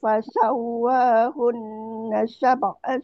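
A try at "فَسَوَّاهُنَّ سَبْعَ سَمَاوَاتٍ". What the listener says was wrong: Sab tak bagi dia lembut lagi qalqalah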